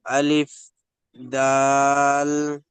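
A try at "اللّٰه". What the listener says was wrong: না না, লাম বলুন, আল্লাহ তো এটা। আলিফ লাম।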